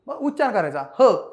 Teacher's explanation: ह वर्णाचा उच्चार करताना फुफुसातील हवा तोंडावाट्या जोराने बाहेर फेकली जाते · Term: महाप्राण